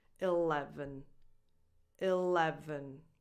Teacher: the first E, the first sound, is usually a lax I sound, like in the word it